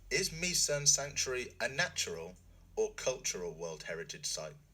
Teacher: chúng ta sẽ nói với ngữ điệu đi lên ở lựa chọn đầu tiên và đi xuống ở lựa chọn thứ hai